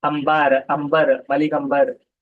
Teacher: बाज अल्फाज में जिनमें नून साकिन के बगैर बा आता है तो नून गुना की आवाज मीम से तब्दील हो जाती है। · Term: नून गुन्ना